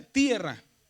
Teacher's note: El acento va en la e.